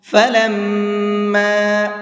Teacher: میم کے اوپر تشدید ہوتی ہے تو وہاں پر غنہ کر کے پڑھتے ہیں